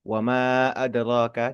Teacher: Lintas kata bunyi panjang di akhir kata ma bertemu dengan hamzah di awal kata adroh. Diistilahkan di hukum tajwid itu mad munfasil yang terpisah gitu kan ya.